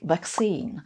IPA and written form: vækˈsiːn (vaccine)